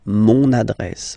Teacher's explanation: You can hear now this little link, so you've got to pronounce this N